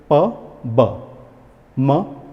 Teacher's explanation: इसमें हम होठों का यूज़ कर रहे हैं, तो इसीलिए हम इन्हें बायलेबियल शब्द कहते हैं